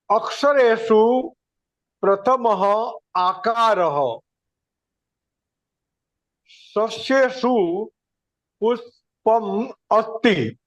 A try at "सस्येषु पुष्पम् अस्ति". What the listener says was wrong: सम्यक सम्यक महोदय, बहु उत्तमम बहु उत्तमम।